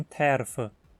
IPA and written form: tʰˈˈɛrfə (terfe)